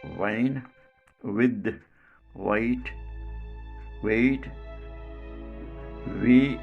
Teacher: two lips come together and form a round shape · And the velum part, the back of the tongue touches the velum part and obstructs the air stream to enter the nasal cavity. Manner of articulation is approximant, quality voiced. So this sound is called labio-velar voiced approximant.